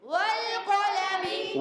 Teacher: قاف موٹے حروف میں سے، حروف مستعلیہ میں سے، زبان کی جڑ اور تالو کے نرم حصے سے ادا ہوتا ہے